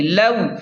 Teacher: لام واو زبر لو، یہاں پر واو لین ہے تو اسے جلدی اور نرمی سے پڑھیں